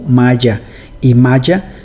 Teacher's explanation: yeísmo, que se refiere al hecho de que palabras como maya y maya se pronuncian igual